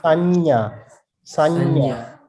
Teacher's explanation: when you say nya sound, nya, then the middle of the tongue touching the roof of the mouth.